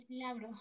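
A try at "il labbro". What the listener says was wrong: Atención, il labro. Bene, ¿no? Doppia B abbiamo qua. Il labro.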